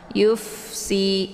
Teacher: Fa ini merupakan sifatnya hamas. Jadi ada desis angin yang agak samar-samar.